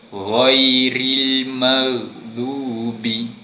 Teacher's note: cara sebutan ataupun makhraj huruf ghain itu berada pada kerongkong di atas, belah atas sekali, di hujung kerongkong.